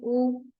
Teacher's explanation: lifted in the mouth and shifted toward the back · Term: हाई बैक राउंडेड वावल